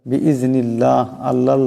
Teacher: আল্লাহ লামের ডাইনে জের আসছে, এই আল্লাহ লামকে পাতলা করিয়া পড়তে হবে।